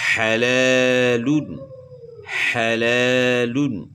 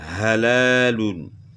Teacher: ح کا مخرج گلے کے درمیان ہے اور ہا کا مخرج گلے کا آخر ہے. الگ الگ مخرج ہیں.